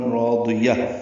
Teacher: را بھی الف بھی ضاد بھی پر ہے، حروف مستعلیہ میں ہونے کی وجہ سے یا کو تائے مربوطہ سے ملائیں گے، یہ ہا میں تبدیل